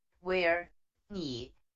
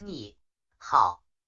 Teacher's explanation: when a word with the third tone is followed by another word with the third tone the first word is pronounced in the second tone